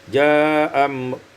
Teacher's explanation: isqatul hamzatil ula, dibuang hamzah yang pertama, qasar dan mad, tawasut, ja'am.